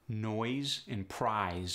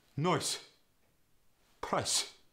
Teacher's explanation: Z goes to the S